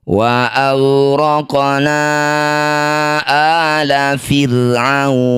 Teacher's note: Disebut bacaan qalqalah sugro. Pantulkan qaf, pantulannya kecil saja.